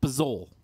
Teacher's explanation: It's just Pizzol. You got to drop the vowels. Yeah, you got to drop the vowel.